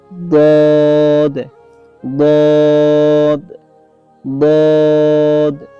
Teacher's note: জিহ্বার গোড়ার কিনারা উপরে মাড়ির দাঁতে গোড়ার সঙ্গে লাগাইয়া